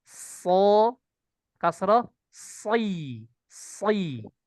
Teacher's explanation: Ketika kasroh tetap jaga ketebalannya.